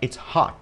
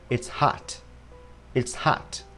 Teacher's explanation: À, do miệng nó bè ra cho nên âm sắc nó ra như vậy. Vậy thì người Anh đọc là O, người Mỹ sẽ đọc là A.